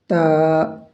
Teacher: تا کو ہم زبان کی نوک کو اوپر کے جو دانت ہیں اس کی جڑ میں لگائیں گے، جب جا کے یہ صحیح ادا ہوگا۔